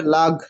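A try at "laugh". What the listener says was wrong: হ্যাঁ, হ্যাঁ, হ্যাঁ, এফ এর উচ্চারণ হবে, মানে খুশিতে লাফ মেরে দিবেন।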